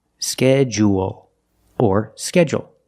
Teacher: also we notice that D you making the J sound like in juice and jump